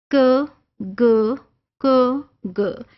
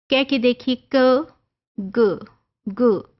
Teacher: back of tongue contact द soft palate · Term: व्हीलर